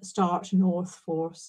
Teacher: There's an increasing rhoticity in Black Bermudian English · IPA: /(r)/